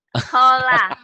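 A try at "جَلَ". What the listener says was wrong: Ketipu. Mau Jala. Ini khola. Titiknya kan pindah ke sini ya. Pindah ke sini. Dipikir masih ja juga Jala. Padahal bukan ini khola.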